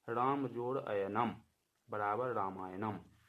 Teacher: राम के अंत में अ है, अयनम के आरंभ में अ है। ये दोनों अ मिलकर के आ बन गए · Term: दीर्घ संधि